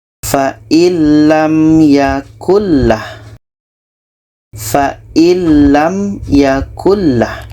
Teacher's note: Jadi bunyi nun kita masukkan ke lam. Fa'illam, nun masuk ke lam dan tidak ada dengung. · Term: idgham bila gunnah